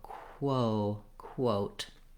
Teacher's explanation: you have to move from the w to the o after your k sound